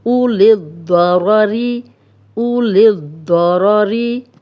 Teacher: اب دود موٹا ہے، موٹا پڑھا جائے گا، را پہ زبر ہے، را موٹی پڑھی جائے گی. او للضراری، او للضراری، دو را ری.